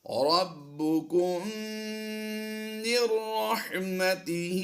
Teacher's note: یہاں پر ہم نے غنہ میم ساکن میں نہیں کرنا، لیکن میم ساکن کے بعد دوسری میم آ گئی تو یہاں پر ہم نے ادغام شفوی کرتے ہوئے غنہ کرنا ہے